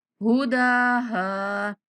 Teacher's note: दाल के ऊपर खड़ा ज़बर है, दाल को खींचेंगे और हा के बाद अलिफ मद्दा है तो हा को 1 सेकंड तक लंबा करेंगे